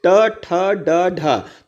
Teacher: तो इसको दोस्तों अगर हम इसका उच्चारण करेंगे तो हम लोग पाएंगे कि जो हमारा तालु स्थान है उसके जस्ट ऊपर अगर हम जीभ टच करेंगे तो ये सारे जो है उच्चारण इसके उच्चारण होंगे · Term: मूर्धा